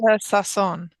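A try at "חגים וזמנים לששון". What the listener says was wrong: very good. Let's say it again.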